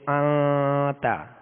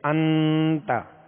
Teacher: تو ان یہ ظاہر ہوا غنہ، اور آتا یہ اخفاء ہوا، یعنی آواز کو ناک میں لے جا کر 1 الف کی مقدار ہم نے چھپایا · غنہ کر کے پڑھیں گے، مگر ناک میں آواز ظاہر نہیں ہوگی، چھپے گی